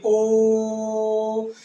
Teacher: ओ को खींचता हुआ जा रहा है, ध्वनि बढ़ती जा रही है ओ, इसका निशान मतलब है कि दीर्घ स्वर जो और ज्यादा खींचा जा रहा है बोल के। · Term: प्लुत